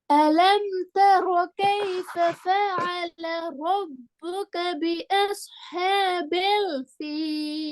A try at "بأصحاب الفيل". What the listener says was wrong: بيل அதான் பிழை. பில்ங்கிறது பிழை. அதை மாத்துங்க. பியல் என்ன பியல் பீல் பீல். பில் ஃபீல் பி அஸ்ஹாபில் ஃபீல்